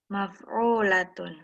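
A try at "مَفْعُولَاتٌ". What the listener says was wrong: Kurang panjang, Bu. Maf'ulatun.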